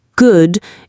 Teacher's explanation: But for the short sound in good, your lips are much more relaxed and only slightly rounded. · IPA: /ʊ/